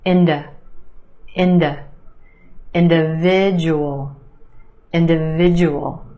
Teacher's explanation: The second syllable is where you have the schwa